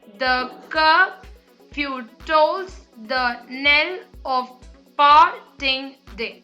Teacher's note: So this together is 1 foot, this together is one, this together is another one, this another one, and this another one, where you have an unstressed syllable followed by a stressed syllable. So this line on the whole is written in an iambic meter, and because you have 5 feet, it is called as a pentameter line.